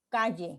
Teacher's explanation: la lengua deja pasar el aire por los lados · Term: lateral